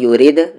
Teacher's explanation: یرید، دال پر قلقلہ ہوگا. نی کو را ملاتے ہوئے را کو ہم ہیوی کریں گے.